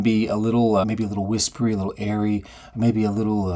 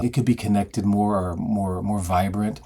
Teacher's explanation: people start speaking with a sort of breathy whispery quality, maybe a little airy